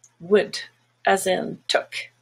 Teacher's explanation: it's short it's quick and the tongue is just a little bit more relaxed a little bit lower